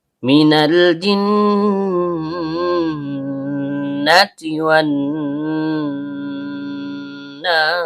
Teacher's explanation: Karena nunnya bertasydid, sehingga dia termasuk hukum bacaan gunnah. Artinya dengung atau ditahan lama.